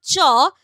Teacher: জীভের অংশটা তালুটাকে ঘষে দিয়ে শ্বাসবায়ুটাকে বার করছে সেই জন্য একে বলা হচ্ছে গৃষ্ঠ ধ্বনি নেক্সট যেটা আসবে সেটা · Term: ঘৃষ্ট ধ্বনি